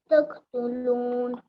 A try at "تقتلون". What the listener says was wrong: कलकला कीजिए बेटा, फिर से आप मिस कर रहे हैं।